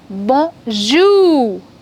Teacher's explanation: The stress will be on the second syllable.